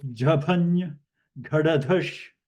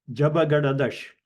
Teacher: So it is non-aspirated, so it is Alpa Prana. You don't voice so forcefully.